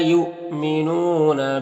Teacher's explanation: حمزہ ساکنہ ہے واو کی شکل میں تو جھٹکا لگے گا. نون میں واو مدہ ہے، ایک الف کے برابر کھینچیں گے.